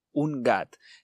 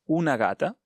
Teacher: delante de la g no hay vocal esta g suena más fuerte